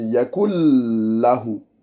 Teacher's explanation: on ne doit pas séparer le nun et le lem. C'est le idram bilarunna.